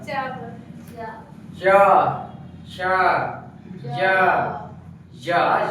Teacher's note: तालु के ऊपर यानी कि जीभ का पिछला भाग सटेगा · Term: तालु से उत्पन्न होने वाला